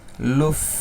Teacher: কিভাবে উচ্চারণ করতে হয় আপনাদের মনে আছে মাখরাজটা দাত সামনের দাঁত উপরের দাঁতকে নিচের ঠোটের পেটের সাথে লাগিয়ে উচ্চারণ করতে হয়। ঠোটটা হালকা ফাঁকা থাকে।